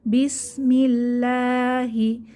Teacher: এখানে আল্লাহর লাম পাতলা করে পড়লাম